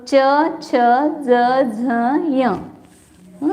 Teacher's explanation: तालू जो ऊपर है अपने वहां पर जीवा लगती है तो च छ ज झ य इसलिए इसको तालव्य बोलते हैं